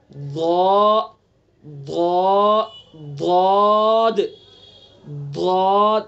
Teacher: حرف کی آواز کا آہستہ آہستہ دراز ہو کر حافظ لسان کے شروع والے حصے سے حافظ لسان کے آخری حصے تک پہنچ کر لام کے مخرج تک پہنچ جانا۔ ضاد ضاد، یعنی ادا کریں گے آہستہ آہستہ لام کے مخرج تک پہنچ جائے گا، اس لیے مستطیل ہے یہ۔ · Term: استطالت